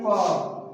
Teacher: और प का जो होता है इसका उच्चारण ओष्ठ से होता है, ओष्ठ यानी ओठ से होता है। जब हम बोलते हैं प बोलते हैं तो हमारा ओठ सट जाता है, इसलिए इसको बोला जाता है कि इसका उच्चारण स्थान का है ओष्ठ है।